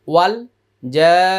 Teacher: প্রথমে 4 আলিফ টান তারপর ওয়াজিব গুন্না